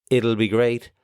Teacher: some people like our speaker here actually even pronounce the t a bit like a d